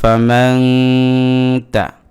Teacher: ফা জবর ফা, মিম নুন জবর মান, ফা মান, তা জবর তা, ফা মান তা, এখানে নুন সাকিনের পরে তা আসছে, ইখফার অক্ষর, ইখফা হয়েছে। অতএব এই নুন সাকিনের উচ্চারণটাকে নাকের ভিতরে নিয়ে একালিফ গুণনা করতে হবে।